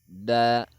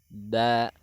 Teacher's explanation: Nah, ujung lidah ini kita umpamakan ujung lidah menyentuh kulit gigi seri atas atau pangkal gigi seri atas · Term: huruf da